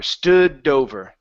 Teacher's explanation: the D connect the D to the word over okay because what you're doing is you're pausing in between there